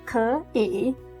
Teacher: ké sounds like a second tone